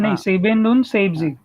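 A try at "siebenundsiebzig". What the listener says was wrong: स नाही आहे. स नाही. झ आहे. झ. झिबेन.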